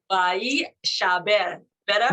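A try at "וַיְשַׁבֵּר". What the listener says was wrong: Not by yeah. You don't hear ye. You just yeah. Vayeshaber.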